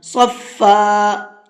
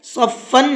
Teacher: ایک زبر کے ساتھ میں الف لگا کر کے پڑھتے ہیں اور ایک زبر کو ختم کر دیتے ہیں